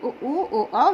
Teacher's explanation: व्रत का मतलब गोल, मुखी का मतलब ओंठ। जिस ओंठ गोल हो जाए व्रतमुखी कहलाता है।